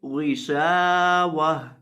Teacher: آخر پہ یہ جو گولتا ہے اس کو وقف کرتے وقت ہا ساکن سے بدل دیں گے